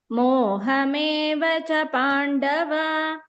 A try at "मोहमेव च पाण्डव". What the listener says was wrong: don't drag भगिनि Pandava, don't say Mohameva cha Pandava, because when you are doing continuously, your Pandava goes still more.